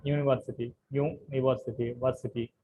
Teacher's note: the third syllable is యాక్సెంటెడ్